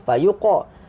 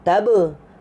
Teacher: Qaf tadi kelantunan dia ke atas. Fayuqa. Huruf ba lantunan dia ke depan. Taba. Bukan taba.